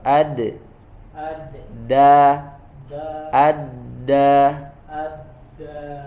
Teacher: Sama makhrajnya seperti huruf to ya, yaitu menempelnya harus di antara atau harus kena gigi ya. Tidak boleh hanya tidak boleh hanya di gusi ya. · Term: huruf dal